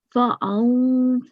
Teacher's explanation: So therefore, it's huruful ikhfa, and therefore you have to make a 2-second nasal sound